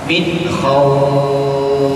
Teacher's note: Khawfnya dipanjangkan sampai 6 harokat